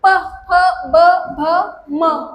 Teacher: हे sound create करताना तुम्ही ओठांना न चिटकवता करू शकताय, हे पॉसिबलच नाही. प होणारच नाही, चिकटल्याशिवाय ते साऊंडच क्रिएट होणार नाही. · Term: ओष्ठवर्ण